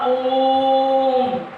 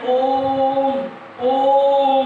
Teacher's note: ओ को 3 बार उच्चारण करिए, ओ को 3 सेकंड तक खींच के बोलिए, तब आपका ये कहलाएगा प्लुत स्वर में आएगा ओम